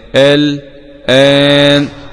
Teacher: وقرأ حمزة بالسكت بخلف عن خلاد